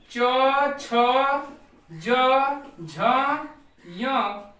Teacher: य का उच्चारण स्थान ये आपका तालु है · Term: तालव्य